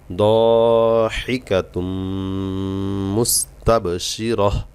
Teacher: তানবিনের পরে মিম আসছে ইদগামে বা গুন্না হবে